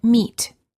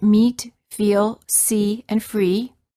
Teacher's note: The lips are slightly smiling, tense, and not rounded. And the tongue is tense. It is high and far forward near the roof of the mouth. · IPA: /iː/